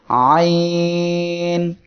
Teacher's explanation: হলকের বা কণ্ঠনালীর মধ্য হইতে আইন উচ্চারিত হয়। কণ্ঠনালী বা হলক হলো এই অংশটুকু, এর মধ্যখান এই জায়গা থেকে আইন অক্ষরটি উচ্চারিত হবে।